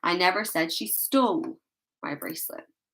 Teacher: The stress is on the word stole.